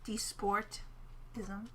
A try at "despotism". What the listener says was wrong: There's no R in there. Despotism.